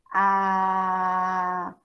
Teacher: a boca está inteiramente aberta e não tem nenhuma barreira para a passagem desse som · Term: fonema vocálico